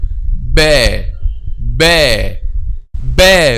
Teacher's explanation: we are pronouncing this letter, which is letter B, by pressing the lips together.